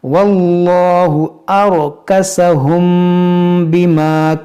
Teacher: میم ساکن کے بعد با ہے، تو یہاں پر ہم اخفاء شفوی کریں گے، یعنی یہاں پر غنہ کریں گے